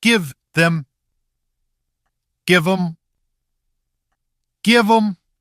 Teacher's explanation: Here the th often weakens. Pushing the tongue tip forward for th is too slow for fast speech.